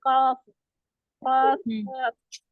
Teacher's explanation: काफ थोड़ा नीचे से, नीचे हटकर अदा होती है।